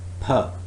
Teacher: it's voiceless bilabial plosive sound